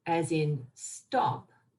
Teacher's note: in stop the t doesn't have the aspirated form try and say stop doing an aspirated form stop it doesn't